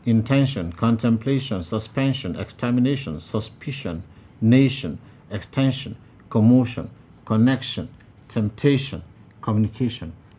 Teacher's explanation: since they all end in the same way with ION, they are to be stressed on the syllable before the last.